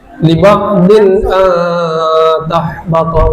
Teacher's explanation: Liba'din tahbato itu izhar. Izhar itu jelas dan cepat. Jadi tidak boleh didengungkan.